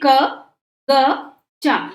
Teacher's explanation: जब हम क बोलते हैं तो क में आपको आवाज आती है अ की, यानी क हम बिना आ का उपयोग बिना आ बोले क नहीं बोल सकते।